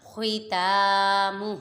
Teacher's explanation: خا متحرک، تا پہ کھرا حرکات، میم متحرک اور ہا پہ کھرا حرکات، اور خا کو پر پڑھیں گے، حروف مستعلیہ میں سے ہے